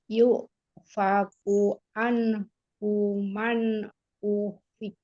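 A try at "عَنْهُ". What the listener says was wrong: Huruf ainnya jadi hamzah deh, mentang-mentang belajar hamzah kayaknya. Bukan anhu tapi an. tempat keluarnya itu apa ya?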